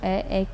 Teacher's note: कंठ और तालू को मिला कर के जब हम बोलते हैं तो अ ए की साउंड आती है